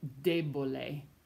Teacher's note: debole, the stress falls on the first syllable instead of the second to last syllable